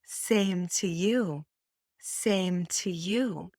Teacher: stressing same and you and the word too is very reduced